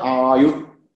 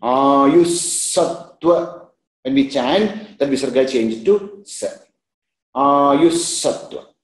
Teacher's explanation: So please see the ayusattva, ayuhu sattva, that visarga will change into sa